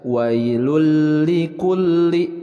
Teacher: memasukkan suara tanwin yaitu nun ke dalam huruf yang berada setelah tanwin · Dan ini adalah tanwin bertemu lam, ini termasuk idgham bila gunnah, yaitu idgham yang tidak disertai dengan gunnah. Jadi cara membacanya adalah wailul likulli, jadi jangan ditahan, jangan disertai gunnah.